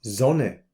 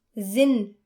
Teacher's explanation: But in words like Salzburg. where the S comes at the beginning, we should note that the letter sound is like the English Z